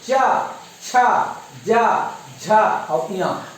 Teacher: च का परिवार का जो आवाज है तालू से निकलता है। · ये जो तालू है, तालू को हमारा जीभ जो है स्पर्श कर रहा है।